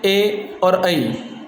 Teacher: इनको बोलते समय हमारी जीवा है वो हमारे तालु को भी छूती है और कंठ से भी आवाज़ आती है, इसलिए ये हो गए कंठ तालव्य।